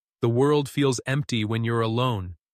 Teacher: Let empty echo in a low tone.